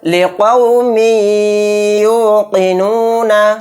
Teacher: پر بھی ادغام یا یعنی ادغام مع غنہ کا قاعدہ ہوگا، میم کو یا میں ملاتے ہوئے تھوڑی دیر آواز کو روکیں گے